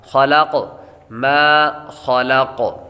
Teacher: ما خلق، خلق، ما خلق، میم کے آگے الف ہے، الف حروف مدہ ہے، اور حروف مدہ کو ایک الف یعنی دو حرکات کے برابر کھینچ کر پڑھتے ہیں۔ خلق، خا حروف مستعلیہ میں سے ہے، اور حروف مستعلیہ کو ہمیشہ ہر حالات میں ان کو پر پڑھا جاتا ہے، خا کو پر کریں گے، لام باریک ہے، اور قاف جب وقف کریں گے تو قاف ساکن ہوگا، تو حروف قلقلہ جب ساکن ہوں تو ان میں خوب قلقلہ ظاہر ہوگا۔